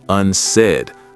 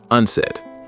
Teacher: The stress is on the second syllable, unsaid, not unsaid.